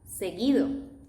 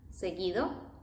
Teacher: In this case, U becomes silent